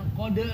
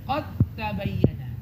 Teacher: Tanya-nya bertasydid langsung masukin dal ke ta dengan sempurna. Idgham kamil atau tam.